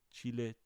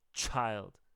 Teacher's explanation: English, ch will blow out a match. That's how much wind you're producing.